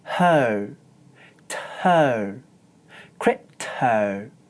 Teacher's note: when I say təʊ it sounds like I'm making the sound /t/ and then saying həʊ.